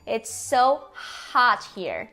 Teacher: ele soa como um o pra gente mas a boca tá mais aberta e a língua tá mais baixa